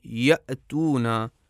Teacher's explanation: حمزہ جب ساکن ہو مثلا جب آپ کہیں یأتونا تو ہم دیکھتے ہیں کہ آواز کی تاریں بالکل بند ہو جاتی ہیں اور بالکل ہوا گزرنے کی بھی گنجائش نہیں باقی رہ جاتی